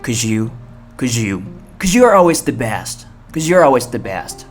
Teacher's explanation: cause you 有时候连起来会变成日的发音